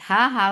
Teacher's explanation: Ha will get sifa of Rakhawa, and it should be from your throat, last part of your throat.